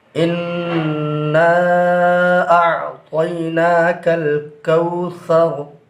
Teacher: مد منفصل کو بھی مد متصل کے برابر کھینچ کر پڑھیں گے یا اس سے کم۔ کوثر میں وقف کریں گے کیونکہ آگے گول نشان ہے جس کو آیت کہتے ہیں۔